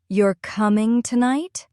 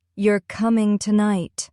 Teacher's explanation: That rising tone makes it a question.